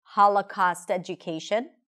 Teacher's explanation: She really slowed down when she said the words 'Holocaust education', these are big content words and they're absolutely stressed